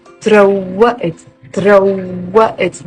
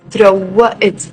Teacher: There is a shadda on the waw and you're stressing on the waw.